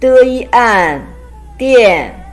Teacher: pronounced as dian, is a combination of de and yan. There is a fourth tone.